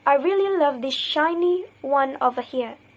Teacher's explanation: s can assimilate to sh before sh